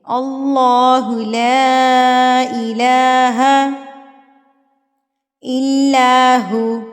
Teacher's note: لام کے اوپر مد ہے تو ہم اس کو 4 حرکات کے برابر کھینچیں گے